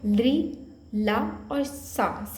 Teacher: ता वर्ग के अतिरिक्त ली, ला और सा, सरौते वाला सा, इन तीनों का उच्चारण स्थान भी दंत होता है